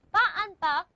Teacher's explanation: So again, with ba and ba, the closure is in the lips. We stop the air completely using the lips.